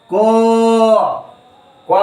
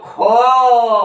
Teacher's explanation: को में कम समय लगेगा, खो में अधिक समय लगेगा